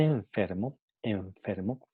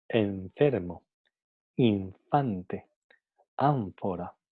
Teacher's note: Entonces el sonido labiodental f ha afectado el sonido n que viene antes. Entonces el sonido n pasa de ser un sonido alveolar a ser un sonido n labiodental